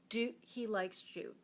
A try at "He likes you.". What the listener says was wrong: He likes Jew? You said he likes Jew. I know, but you said he likes Jew.